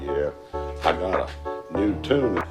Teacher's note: But in American English, the /j/ is dropped. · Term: Yod Dropping, yod dropping